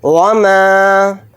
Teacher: मीम के साथ अलिफ मद्दा है, मीम अलिफ ज़बर मा को थोड़ा खींचकर पढ़ेंगे।